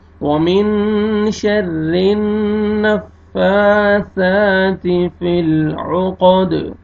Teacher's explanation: فا کی عمر کھڑا زبر ہے، سا کی عمر بھی کھڑا زبر ہے، یہ الف مدہ کے قائم مقام ہے، آپ نے کھینچنا ہے فا کو بھی اور سا کو بھی